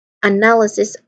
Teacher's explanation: It's a schwa sound, and then followed by null with a nasal sound N and an L sound.